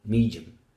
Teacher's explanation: we do not pronounce E anymore, but we end up with an affricate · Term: compression